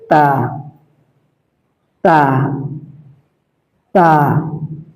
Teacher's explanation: জিহ্বার আগা সামনের উপরের দুই দাঁতের গোড়ার সঙ্গে লাগিয়ে উচ্চারিত হয়।